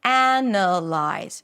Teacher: So the difference, again, is in the primary stress, right? Here, the primary stress falls on analyze, the first syllable. Analyze. So the first syllable is actually the as in cat, and then you have a schwa, ana. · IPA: ˈænəlaɪz